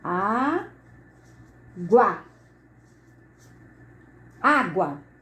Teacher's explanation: Aqui eu tenho uma vogal. O U, o som é mais brando. Então aqui eu tenho uma semivogal. Quando isso acontece, essa posição semivogal mais vogal, eu tenho um ditongo crescente.